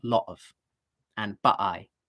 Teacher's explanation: she uses glottal stops all the time in places where you shouldn't really use them